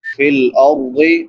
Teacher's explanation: فی الارض، را ساکن ما قبل ضمہ ما قبل فتحہ یعنی زبر ہے تو اس کو پر پڑھیں گے، اور ضاد حروف مستعلیہ میں سے ہے، اس کو بھی موٹا کر کے پڑھیں گے۔